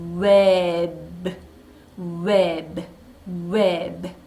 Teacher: 우 소리 났어요. 에 소리 났어요. 버 소리 났어요. 소리 세 개가 다 각각 들리죠. 한 번에 웹 하고 한 박자에 내지 않았어요.